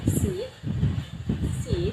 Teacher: This is a short vowel sound. To make this sound, your mouth should be more relaxed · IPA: /ɪ/